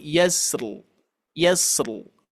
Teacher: Kita ambil sifat huruf ro, tapi sebelum huruf ro di sini ada huruf sin yang mempunyai sifat rukhwah, mengalir gitu ya. Jadi harus dialirkan terlebih dahulu.